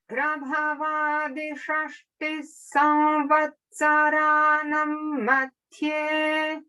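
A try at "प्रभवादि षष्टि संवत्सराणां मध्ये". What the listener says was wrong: Just watch out for the final dirgha in Samvatsaranam. Samvatsaranam Madhye.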